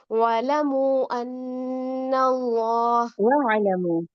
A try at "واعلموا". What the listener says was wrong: وَاعْلَمُوا عین کو ٹھیک سے رکھیں.